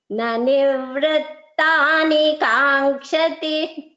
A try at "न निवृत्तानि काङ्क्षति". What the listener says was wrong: Bhagini, you are chanting nanivrittani. You are chanting an extra v here. That is not there. There is no sayukta akshara v there. So what you are chanting is nivrittani.